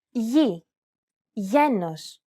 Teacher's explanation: This letter is tricky because the pronunciation changes depending on the surrounding vowels. When it precedes an I or an E vowel, it's pronounced very much like an English Y sound.